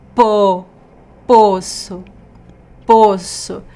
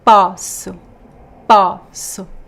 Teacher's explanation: So, poço and poço, this is the joke here because they are very similar words, but poço, the well, poço is pronounced with the closed O, po, poço, poço. And the verb I can, in this case I cannot, não posso, it is open, the open O